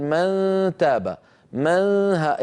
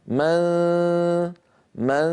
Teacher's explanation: فتحتي الانف هي هي كنايه عن صوت الغنه من من اذا لساني قريب من مخرج الدال قريب من مخرج التاء وفي صوت من الخيشوم غنه كامله الطول